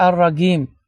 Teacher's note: bəzi ərəb ölkələrində cim hərfinə qim, xüsusən Misir tərəflərdə və bu ləhcədir. Qı kimi tələffüz edirlər.